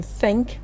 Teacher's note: for th as in think, the tongue touches the upper front teeth to shape the sound